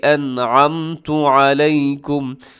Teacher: انعمت یہاں پر اظہار ہو رہا ہے، اسے کہا جاتا ہے اظہار حلقی، نون ساکن کے بعد عین ہے جو کہ حروف حلقی میں شامل ہے۔